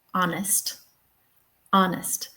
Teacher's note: the first syllable is stressed and the H is in the first syllable, but it's silent. Um, so yeah, if it's silent, it might be in a stressed syllable, but we won't hear it.